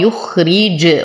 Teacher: وقلقل الجيم فهي من حروف قطب جد · نصبر على الخاء فهو ساكن نعطيه الرخاوة. ذي وتم كسرة الراء.